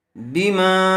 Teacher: حرف مدہ کے بعد حمزہ دوسرے کلمے میں آیا ہوا ہے اس لیے مد منفصل کا قاعدہ ہوگا اور اس کو حرف مدہ کے مقابلے میں تھوڑا زیادہ کھینچ کر پڑھیں گے۔ بما، علامت کے طور پر اوپر مد لگا دیا گیا ہے۔